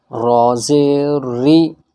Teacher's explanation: را کو پڑھتے میں ایک پھسلن ہوتی ہے، زبان ہماری پھسلتی ہے۔ اگر اس میں ہم تھوڑی سی بھی رکاوٹ پیدا کریں گے تو را ادا نہیں ہوگا۔